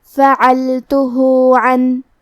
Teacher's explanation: کلمت فعلتہ میں عین کی ادائیگی حلق کے درمیان والے حصے سے ہے، کیونکہ یہاں لام ساکن ہے تو ہمیں لام کو ظاہر کرنا ہے، آخری میں ہا پہ الٹا پیش ہے، یہاں بھی حکم ہے مد صلہ صغرا تو ہم اپنی آواز 2 مد کے برابر لمبی کریں گے